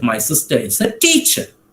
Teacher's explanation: the third occasion my emphasis was on teacher